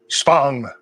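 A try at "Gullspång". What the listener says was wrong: Not Spong. It's not German. Gulspang.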